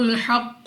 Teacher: قاف مستعلیہ میں سے ہے، موٹا پڑھیں گے منہ اور آواز کو کھول کر